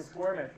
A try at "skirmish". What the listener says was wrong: It's S-K-I. There's no. You're saying squirmish.